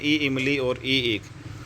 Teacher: यहां पर जो ईई है वो अग्र भाग से बोले जाते हैं ना कि पश्च भाग से बोले जाते हैं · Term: तालू से बोले जाने वाला